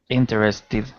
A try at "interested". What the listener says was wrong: Yeah, interested. Perfect. Excellent.